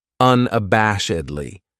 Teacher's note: this adverb has five syllables and the stress is on that third syllable that bash unabashedly that second syllable has that schah that uh